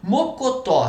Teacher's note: A, E, O, EM recebe acento. Mocotó, sílaba tônica é o tó